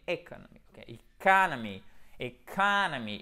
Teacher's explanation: ce n'est pas un I vraiment, c'est plutôt comme un E accent aigu. En tout cas, ça ressemble beaucoup au E accent aigu français. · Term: I court